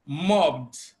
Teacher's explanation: But here we have mobbed, because B is voiced and the ED comes after the voiced consonant B, so ED is pronounced as D